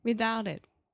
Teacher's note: that's a stop T my tongue is in the same position but I'm not aspirating